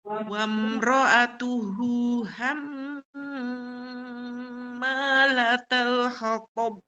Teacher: gunnah yang paling sempurna dibaca dengan 3 harokat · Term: gunnah musyaddadah